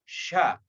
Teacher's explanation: Ini huruf shin adalah pekerjaan lidah atau lisan. Lisan naik di atas, berada di langit-langit rongga mulut. Sya. Ketika menyebut huruf sya, sebaiknya atau kita tidak boleh menggerakkan bibir.